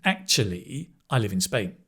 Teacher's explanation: And often in this case, we say actually Falling, rising tone.